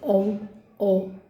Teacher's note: पश्च स्वर, जब जिह्वा का भाग जो पिछला भाग है वो सक्रिय रहता है उसको हम पश्च स्वर बोलते हैं। जैसे औ, ओ अपने आप ही पता चल जाता है।